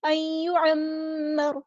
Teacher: ان یعمر، میم پہ غنہ زمانی ہو رہا ہے، را کو ہم ساکن کر دیں گے وقف کرتے ہوئے، اور یہ جو را ہے اس کو ہم پورا ادا کریں گے، ہیوی ادا کریں گے